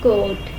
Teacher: It is a cardinal vowel which is produced from cardinal positions. It is produced from half high back position of tongue in the mouth.